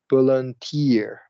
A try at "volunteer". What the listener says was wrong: A little bit shorter A little bit shorter on volunteer.